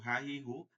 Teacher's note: হা, গম্ভীর আওয়াজে, বাতাস চলবে না।